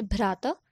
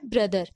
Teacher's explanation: तो यहाँ पे आप देख सकते हैं भ चेंज हो गया है ब में · चलिए एग्जाम्पल देखते हैं। पहला इंडो यूरोपियन वॉइस्ड साउंड भ, ट्यूटोनिक में कैसे ब बनता है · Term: वॉइस्ड एस्पिरेटेड स्टॉप साउंड